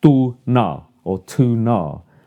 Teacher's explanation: You need time to have those two Ns together.